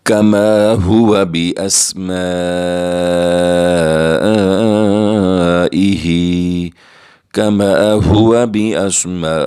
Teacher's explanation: 2 second تک الف کو کھینچ کر پڑھیں گے، اور بأسمائہ، میم کے ساتھ الف جو ہے یہ ساکن ہے لیکن اس کے اوپر بڑی مد ہے، ہم اسے 5 سیکنڈ تک 5 الف کی مقدار کھینچ کر پڑھیں گے